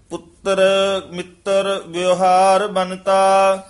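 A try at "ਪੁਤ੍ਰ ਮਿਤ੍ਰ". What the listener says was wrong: रारे पूरे नहीं उच्चारण करने पुत्र मित्र रारे पूरे होंगे हेठां रारा हुए था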